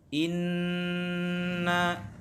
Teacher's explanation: panjang bacaannya yaitu satu Alif atau dua harokat yah ditekan satu Alip atau dua roka'at contohnya Inna sum mana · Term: ghunnah musyaddadah